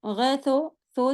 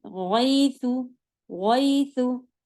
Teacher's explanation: इसी तरह अगर आप पेश पढ़ेंगी तो गैसो, सो जैसी आवाज नहीं, गैसु, गैसु, ठीक। सू होगा बिल्कुल होठ गोल से